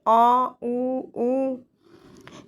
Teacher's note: जिन स्वरों के उच्चारण में जीभ का पश्च भाग काम करता है, उसे हम क्या कहते हैं, पश्च स्वर। जैसे आ, ऊ, ये सारे के सारे क्या हैं, पश्च स्वर।